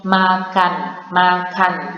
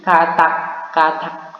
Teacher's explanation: Bunyi N ini ketika berada di akhir, dia masih bisa dipanjangin lagi. Contohnya makan, dia masih bisa panjang, artinya dia masih bisa hidup. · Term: konsonan hidup